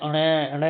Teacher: मैंने आपको बताया है प्रत्येक वर्ग का पांचवा अक्षर हमारा नासिक्य होता है क्योंकि इनके उच्चारण में जब हम करते हैं ण ण तो नाक से ऐसी आवाज निकलती है जैसे नाक से बोल रहे हो